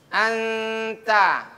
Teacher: ketika dia menjadi ikhfa, bunyinya akan mengikuti huruf anta, bukan angta